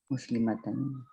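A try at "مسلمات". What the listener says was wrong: آپ مسلم متن کیوں کر رہی ہیں ذرا مجھے بتائیں گی. ابھی بھی کہا آپ نے. آواز آ گئی مجھے تھوڑی.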